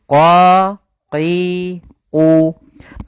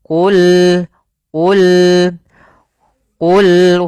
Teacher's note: Qul qof-nya tebal. Ini hati-hati jangan terbaca dengan kaf